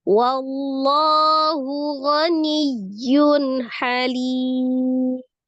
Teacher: Mim, dhamma tanwin, ketika diwaqafkan, tetap sukun ya. Halim, maka menjadi mad arid li sukun, panjangnya 2, 4 atau 6.